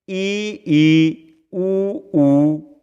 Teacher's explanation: सैवृत स्वर जीभ आगे से ऊपर उठे और मुख हो बंद